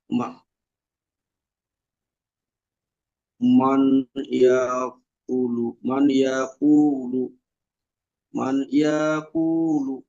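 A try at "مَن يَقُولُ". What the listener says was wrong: হ্যাঁ, নুনটা উচ্চারিত, নুন সাকিনটা উচ্চারিত হবে না, পরের অক্ষরের তার দিয়ে পড়তে হবে, মাইয়াকুলু মাইয়া। মানে মানে কি নাকে নিয়ে যেতে হবে, মাইয়াকুলু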